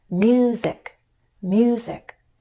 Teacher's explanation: mu and then down in pitch on sick in other words I'm going up on a stressed syllable and then I use the following unstressed syllable to step down